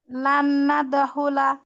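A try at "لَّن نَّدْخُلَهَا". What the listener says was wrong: লান নাদ হয়ে গেছে, গুন্না হয়নি তো, লান গুন্না করতে হবে। গুন্নাটা একটু বেশি করে করার চেষ্টা করবেন, এক আলিফ পরিমাণ। লান নাদখুলা।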